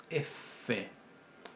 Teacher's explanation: la F es labio dental sorda fricativa